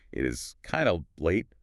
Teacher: Four beats. Kind of choppy.